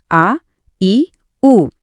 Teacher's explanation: ज्यांना थोडा जास्त वेळ लागतो ते झाले दीर्घ स्वर